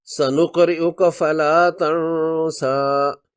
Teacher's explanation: اس صورت میں تن سا پر رک گئے، اب اس کھڑی زبر پر 2 حرکات لمبی مد اصلی تو ہوگی، مگر مد منفصل یعنی 4 حرکات والی مد نہیں ہوگی رکنے کی صورت۔